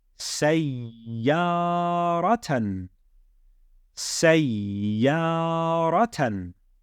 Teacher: I doubled up the ya to make it sayya, and then I lengthened the fatha